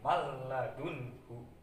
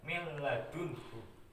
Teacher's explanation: cara membacanya itu memasukkan huruf lam tersebut ke huruf nun tapi tanpa disertai dengung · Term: idgham bila hunah